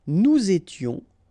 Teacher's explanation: final S not pronounced, and then you make the liaison